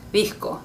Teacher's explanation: It's because sometimes we will put our tongue between our teeth for the D sound to make it soft, disco. Again, it kind of depends where you're from, what country, maybe what region, so yeah, I can't give you an exact pronunciation for that, but it is a lot softer than the English D.